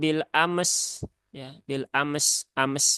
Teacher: kesalahannya yang pertama mimnya mantul, yang kedua sinnya belum tertunaikan rokhawahnya. Maka biar tepat kita ucapkan dulu mimnya bil am, kemudian s, ya, bil am, bil am.